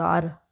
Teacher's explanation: را کو جزم کی وجہ سے بھی پر پڑھتے ہیں کیونکہ جزم سے پہلے زبر ہے